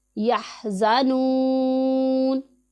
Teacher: زا حروف صفیریہ میں سے ہے، اسے سیٹی کی آواز کی طرح تیز پڑھیں گے ہم. یہاں پر واو مدہ ہے، اسے ایک الف کے جتنا لمبا کریں گے.